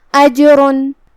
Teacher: جیم پہ جزم ہے، یہاں جیم کا حکم ہے قلقلہ. قلقلہ کا معنی ہے حرف ساکن کو ہلانا، تو ہم جیم کو ہلاتے ہوئے یہ کلمہ کو ادا کریں گے